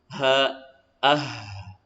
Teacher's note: huruf ha dari tenggorokan bagian bawah